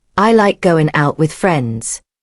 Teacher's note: Hear the difference. The going becomes goin'.